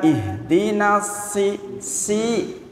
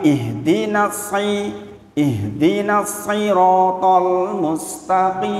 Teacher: Sin dengan sod itu hampir sama memang. Tetapi bedanya tebal dan tipis. Bukan ihdinas si, tapi ihdinas siratal mustaqim.